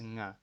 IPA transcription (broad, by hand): ŋ